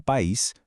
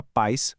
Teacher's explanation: uma estrutura onde a letra I ganha força com o acento e se separa completamente da letra A. Por outro lado, a palavra paz forma o que a gente chama de ditongo, onde as duas vogais permanecem ali bem juntinhas, conectadas na mesma sílaba. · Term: hiato